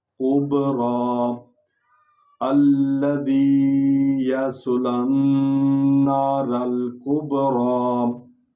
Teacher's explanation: یصلن نارا، قب کا پیش بے، قب با کو ہونٹوں سے ادا کرنا ہے. قب را کو پر پڑھنا ہے اور لمبا بھی کرنا ہے